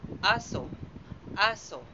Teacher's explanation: walang diin at tuloy-tuloy lamang ang bigkas